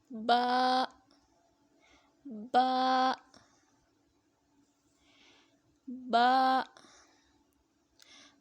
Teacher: دونوں ہونٹوں کی اندرونی تری کو ملنے سے با ادا ہوتا ہے۔ با، با کو ایک الف کی مقدار تک لمبا کریں گے۔